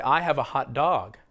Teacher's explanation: a common combination of words that we put together so often you stress the first word as if they're one word